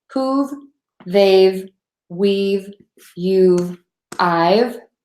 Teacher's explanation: for the have it's just gonna be adding a sound no extra syllable